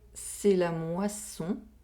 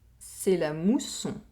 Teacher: Here, we have an oral vowel sound with a semi-vowel sound and an oral vowel sound. We have the [wa] sound in the first sentence, and the [u] sound in the second sentence.